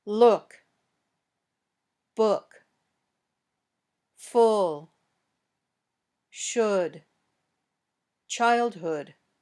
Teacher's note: Your lips should be somewhat rounded when you say this sound, but not as much as for oo.